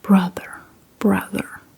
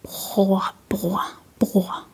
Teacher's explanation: in Danish we kind of use the back of our mouth. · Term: the way we say R